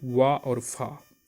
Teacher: दंत और ओष्ठ से मिलकर बनता है दंतोष्ठ।